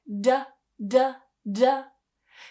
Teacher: voice of the vibration it's more like da da da so they're using the tip that comes up to the exact same position as the ta at the top of the mouth